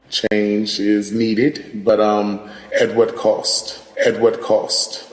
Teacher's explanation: Another feature that we see in DC, similar to New York, is the raised thought cloth vowel, that ah. This is a new feature in DC